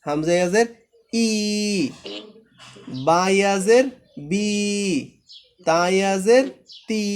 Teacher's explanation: জেরের বাম পাশে যজমালা ইয়া হলে এক আলিফ টেনে পড়বো আমরা